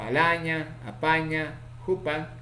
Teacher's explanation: Tenemos aquí a la vocal A, vocal baja, redonda, mejor dicho, central, no redondeada, ocurre en posición inicial, medial y final.